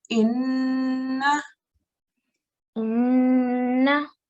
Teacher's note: We join it onto the noon. But because this is a noon mushaddad, it's got an extra rule, and the rule is nasalization. We have to send the sound into our nose for 1 second.